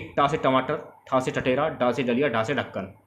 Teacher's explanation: व्यंजन के कठोर तालु के मध्य का भाग मूर्धा कहलाता है। जब जीवा की उल्टी हुई नोक का निचला भाग मूर्धा से स्पर्श करता है तो ऐसी स्थिति में उत्पन्न ध्वनि को मूर्धा व्यंजन कहते हैं